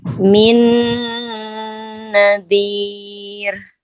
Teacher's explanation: Nah, bukan nazir, tapi nazir. Dia hurufnya ro-nya tipis ya, karena sebelumnya kasroh. Min nadhir.